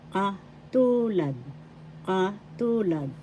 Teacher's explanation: First syllable ka, second syllable tu, third syllable lad. The second syllable has the accent.